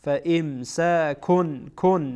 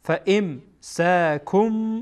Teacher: الطلاق مرتان فامساکن در اصل حقیقتا اینجا تنوین هست ولی چون بعد از تنوین با آمده با حرف اقلاب، اینجا این تنوین به میم تبدیل میشه